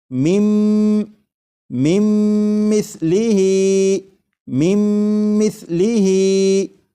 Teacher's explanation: نون ساکن کی آواز پھر نہیں آئے گی، بلکہ میم کے بعد میم کی آواز آئے گی، اور یہاں پر غنہ بھی کریں گے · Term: ادغام